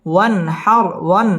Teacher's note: নুন সাকিনের বামে হা আসছে, হা ইজহারের হরফ, গুন্না ছাড়া স্পষ্ট করে পড়তে হবে। ওয়ান হার র পুর হবে এবং রয়ের মধ্যে ওয়াকফ করতে হবে।